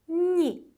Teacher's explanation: I avtomatik olaraq önündə gələn n samitini incələşdirəcək və biz n-nı incə tələffüz edəcəyik.